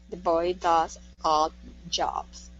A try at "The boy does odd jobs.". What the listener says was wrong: Good. Yeah, I heard that. You had that odd. You had that sound. I like that.